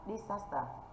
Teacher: Thì trọng âm rơi vào âm thứ hai.